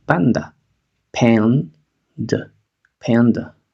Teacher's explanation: Reducimos la segunda vocal, la A.